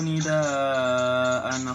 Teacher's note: Nidaa hukumnya mat wajib muttasil karena ada mat yang diikuti oleh huruf hamzah